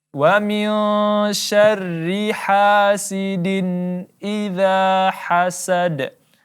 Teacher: tanwin bertemu huruf hamzah maka kita izharkan, kita jelaskan bunyinya dan tidak ada dengung